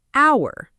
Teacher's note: Silent H at the beginning of certain words. Think about the word hour, H-O-U-R, but we say hour. The H completely disappears.